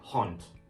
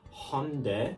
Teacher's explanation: In the plural form, honde, we are hearing a D. So even though there is supposed to be a D at the end of this word, it is devoiced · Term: final devoicing